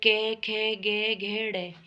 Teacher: ये क वर्ग में आते हैं और ये कंठ से बोले जाते हैं